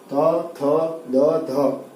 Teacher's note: त थ द ध तक ये दांतों से उच्चारित होते हैं, इसलिए उनको दंत्य ध्वनि कहा जाता है